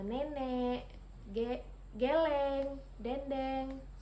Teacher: Kemudian yaitu vokal E, madia bawah depan dengan posisi mulut semi terbuka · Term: vokal E madiyah bawah depan